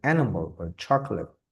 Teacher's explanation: we have the first syllable stress. For example, we have here the word animal or chocolate.